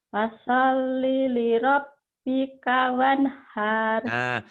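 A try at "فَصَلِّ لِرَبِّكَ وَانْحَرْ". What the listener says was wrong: Wanharnya pendek, ada yang manjangin. Fasolli li rabbika wanhar.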